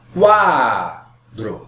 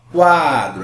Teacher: Essa vogal U quase não é pronunciada quando você faz a pronúncia adequadamente. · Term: semivogal